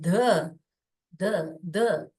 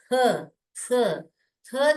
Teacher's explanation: आप जब, आप सब लोग ट्राई करके देखिए ध बोल के, ध ध क्या होता है, ध जब बोलते हैं हम तो टंग क्या करते हैं, ऊपर टच करते हैं। जब हम थ बोलते हैं तो मुंह खुलता है हमारा, और टंग जो है बाहर आती है। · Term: सॉफ्ट साउंड